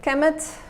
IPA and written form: kmt (Kemet)